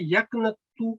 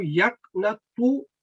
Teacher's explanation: एक ता हल्की आवाज में तरकीक है और एक ता थिक आवाज में है, भारी आवाज में है, तफखीम